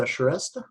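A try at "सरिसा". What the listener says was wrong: Her name is pronounced Sarisa. It looks like Sharisha, but it's Sarisa.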